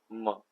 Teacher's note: तो म देख लिया तो ओष्ठ से टच होता है